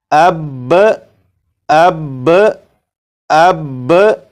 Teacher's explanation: وقف کی صورت میں با کے اوپر جو زبر ہے زبر کو نہیں پڑھیں گے، صرف تشدید کو پڑھیں گے